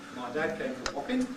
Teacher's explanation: he pronounces it Wapping, alveolar nasal at the end